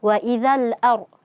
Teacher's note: ada ra sukun, sebelumnya fathah sehingga ra-nya dibaca tafkhim, tebal